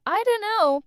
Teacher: the t in don't is often dropped